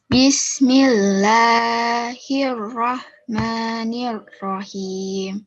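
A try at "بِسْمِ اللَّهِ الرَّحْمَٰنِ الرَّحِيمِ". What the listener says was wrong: Oke, Allahnya masih ya, masih sedikit panjang ya. Kalau mat asli ya atau mat tabi'i dipanjangkannya hanya 2 harokat.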